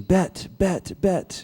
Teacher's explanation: can't get the th sound down so it's bet